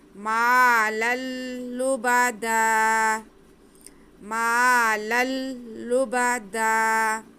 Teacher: اہلکت مالا لبدا، لبدا تنوین کے بعد لام آ رہا ہے، تو ادغام کا قاعدہ ہے، ادغام بلا غنہ، یعنی کہ غنہ کے بغیر ہم یہاں پہ ادغام کریں گے۔ لام پہ جو دو زبر کی تنوین ہے اسے ہم اگلے لام کے ساتھ ملا کے پڑھیں گے۔